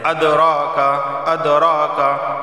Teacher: اد قلقلہ ہوگا کیونکہ دال حروف قلقلہ میں سے ہے